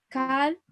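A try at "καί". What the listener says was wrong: Tú dices cal, kai. En ambos es kai. Kai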